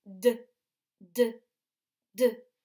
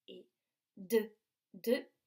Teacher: l'air doit passer par les cordes vocales et doit travailler et la gorge va bouger la gorge vibre